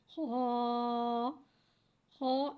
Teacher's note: خا، خا ایک الف یعنی 2 حرکات کے برابر کھینچ کے پڑھتے ہیں۔ خا حرف حلقیہ ہے، حلق کے اوپر والے حصے سے ادا ہوتا ہے۔